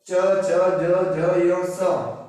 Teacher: तालु के स्पर्शीकरण से बोले जाते हैं। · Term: तालव्य